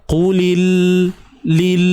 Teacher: lil lam mati ni tahan lidah, jangan lepaskan cepat sangat. Lil tu yang le qulil, tahan lidah kat langit tu.